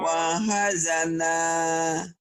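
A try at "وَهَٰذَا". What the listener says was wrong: Tapi wanya pendek. Wahazana.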